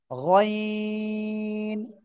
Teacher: মোটা আওয়াজে পড়তে হবে। গইন, গলার শেষ ভাগ থেকে